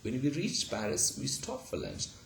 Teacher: So there is no t sound after ch, and there is no t sound after p.